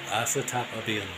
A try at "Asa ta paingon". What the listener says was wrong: It's not biyon. It's not asa tapabiyon. Asa tapaingon. Paingon. P. Yeah, P. Paingon. It's not piyon. Again, asa tapaingon. Asa tapaingon. Asa ta. Pa. I.